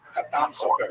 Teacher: the emphasis tends to be on the last syllable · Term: Sephardi pronunciation